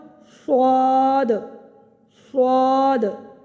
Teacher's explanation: ایک تو یہ پر پڑھا جائے گا، دوسرا اس کی ادائیگی میں سیٹی کی بھی آواز آئے گی۔ حروف صفیریہ 3 ہیں، صاد، زا اور سین۔